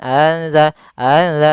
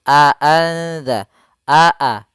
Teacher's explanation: Kemudian pada lafal a anza di sini harus jelas suara hamzahnya jangan anza anza tapi a anza a a jelas.